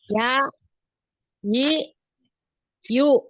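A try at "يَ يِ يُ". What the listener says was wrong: Jadi Anti itu gini bunyinya tadi. Ya, yi, yu. Nah, kalau Anti dengar yang Ana sebutkan seperti ini, kira-kira jadi seperti ada hamzah sukun nggak di belakang? Ya, yi, yu. Ada.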